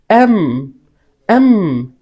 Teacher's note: এম যখন বলবো তখন হচ্ছে দুই টুট একসাথে মিশিয়ে বলতে হবে